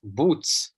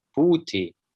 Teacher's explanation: You say rovny for even, as opposed to Prashov, riuny. And an interesting feature is that the verbal ending t became ts